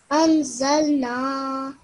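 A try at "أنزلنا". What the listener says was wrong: This is a ra, okay? Make sure you pronounce it as that. Anzarna.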